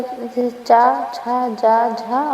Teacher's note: इनके उच्चारण में उच्चारण अवयव सहसा खुलने के बजाय धीरे धीरे खुलते हैं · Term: स्पर्श संघर्षी